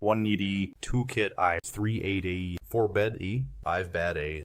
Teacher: Notice that they are all formed in the front of the mouth. Notice the relative positions of the lower jaw, lips, and tongue when I articulate them. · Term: front vowels